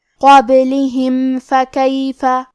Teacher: آخری میں یہاں میم ساکن ہے، پھر حرف الفا ہے، فا حروف الاظہار الشفوی میں سے ہے، لہذا ہمیں میم کو ظاہر کرنا ہے اور ہم یہ حکم کو بغیر غنہ سے ادا کریں گے